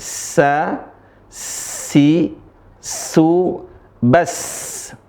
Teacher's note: huruf sinnya dibaca dengan tipis, kemudian dengan keras saja, keras. Desisnya mengalir dengan deras.